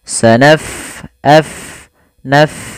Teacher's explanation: Pada lafal bacaan sanafrughu, fa-nya kita alirkan nafasnya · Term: huruf fa